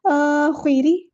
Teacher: را موٹا نہیں، را باریک ہے